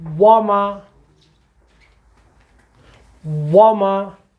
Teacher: واو اور میم دونوں کا مخرج ہمارے ہونٹ ہے. جب بھی یہ لفظ آئے گا وَمَا، ہم نے اپنے ہونٹوں کو آگے لانا ہے ایک دم، تو یہ ہم سے صحیح پڑھا جائے گا.